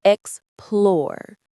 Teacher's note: The stress is on the second syllable. Explore. It rhymes with door or for.